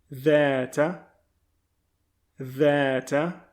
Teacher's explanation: The sounds like a letter D in English, but your tongue is positioned right below your top teeth